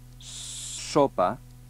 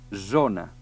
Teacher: si las cordes vocales vibren es producir la esa sonora me entré que si no vibren es producir la esa sorda